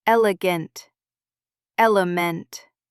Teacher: No stress. E relaxes. It turns into uh or I